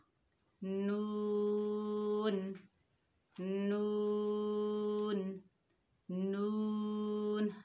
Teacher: नून की अदायगी में ज़बान की नोक को सनाया उलिया के मसूड़ों से लगाएं।